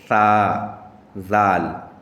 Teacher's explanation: तो ये जुबान के बीच से निकलता है। यानी जुबान को आप दांत के यानी ऊपर वाले दांत के किनारे पे लगाएं तो ये वहां से ये सा और जाल निकलता है · اسی طرح یہ سا ہے، زال ہے، تو یہ زبان کے بیچ سے نکلتا ہے، یعنی زبان کو آپ دانت کے، یعنی اوپر والے دانت کے کنارے پہ لگائیں تو یہ وہاں سے یہ سا اور زال نکلتا ہے